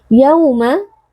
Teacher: waw sukun yang sebelumnya berharokat fathah dibaca dengan lunak karena di sini berlaku lin.